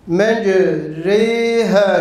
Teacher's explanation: Met harfi olan elifi ya harfi olan yine met harfi olan ya harfine meylettirmektir. Yani elif ile ya arası bir sesle okumaktır. Artık bundan sonra imale olan elif ne tam eliftir ne de tam yağdır. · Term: imale-i kübra